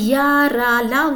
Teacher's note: इनका जो उच्चारण होता है जीभ, तालु, दांत और ओठों के परस्पर सटाने से होता है, लेकिन कहीं भी पूर्ण स्पर्श नहीं होता, इसलिए अंतःस्थ व्यंजन कहते हैं।